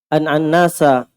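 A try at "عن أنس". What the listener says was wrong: Itu nunnya. Kenapa antum tasdid? Kenapa antum baca an-nas? Kan bisa an-anas. An-anas. Kenapa? An-nas. An-nas. Antum tahu antum baca begitu? Sadar?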